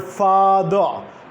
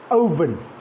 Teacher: schwa is represented in this word father at the end